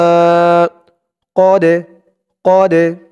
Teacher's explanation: তালটা কলকলার হরফ ধাক্কা দিয়ে পড়তে হবে